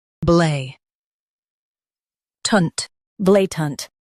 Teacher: Emphasize blay and soften tant.